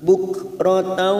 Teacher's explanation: Kaf sukun mempunyai sifat hamas. Tak bunyinya bukratan.